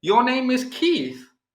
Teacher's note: I've changed the pitch and now it becomes a question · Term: intonation